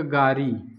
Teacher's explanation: पश्चिमी हिंदी में जो ल है यह पूर्वी हिंदी में अर्थात अवधी में और जो है भोजपुरी है, सब में ल की जगह र हो जाएगा।